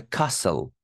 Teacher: T is silent here, guys.